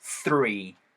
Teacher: 자, 이거 TH 사운드는요. 위아랫니 사이에다가 혀가 살짝 메롱한 상태에서 사운드가 나면서 바람이 살짝 나오면서